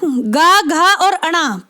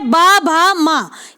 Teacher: घोष या सघोष कहते हैं तीसरे, चौथे या पांचवें वर्ण को